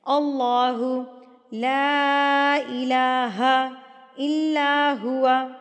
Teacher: لا کو ہم 3 حرکات کے برابر کھینچ کے پڑھیں گے